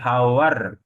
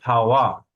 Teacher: একইভাবে আমরা বলবো যেমন এই যে ফাওয়া, লাস্ট উচ্চারণ হলো আর থাকলে তার উচ্চারণ হয় না, তাহলে আমরা ফাওয়ার বলবো না, আমরা ফাওয়া বলবো